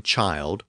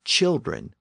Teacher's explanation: one child with a long eye sound but several children with a short eye sound